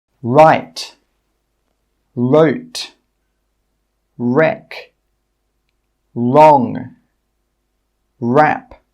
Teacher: In all of these words, we're not pronouncing the W sound. It's silent. We're just pronouncing the R sound.